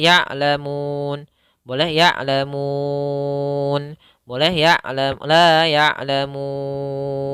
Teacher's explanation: Panjangnya di sini bisa dua ketukan, empat ketukan, atau enam ketukan. Bisa jadi " ya'lamun," atau "ya'lamun," atau "ya'lamun. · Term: mad arid lissukan